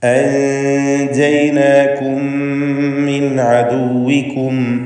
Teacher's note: സാക്കിനത്തായ മീമും ശേഷം ഹറക്കത്തുള്ള മീമും ഇവ രണ്ടിനെയും ഇദ്ഗാം ചെയ്ത് ഒറ്റ ഷദ്ദുള്ള മീമാക്കി ഉച്ചരിക്കണം. ഇവിടെ മീമിന് ഉന്നത്ത് നൽകുകയും വേണം. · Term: ഇദ്ഗാം ഷഫവി